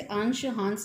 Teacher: अनुस्वार, इसका उच्चारण मुख्यतः नाक से होता है।